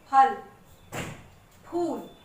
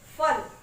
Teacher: फ दोनों होठों को मिलाकर बोला जाता है